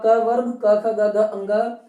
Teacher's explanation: अकुह विसर्जनीय नाम कंठ, अर्थात अ पूरा का पूरा क वर्ग क ख ग घ अंग ह और विसर्ग इनका उच्चारण स्थान कंठ है।